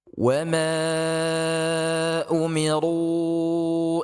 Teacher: wa ma ini di baca empat harakat ya, kemudian umiru ini juga dibaca dengan empat harakat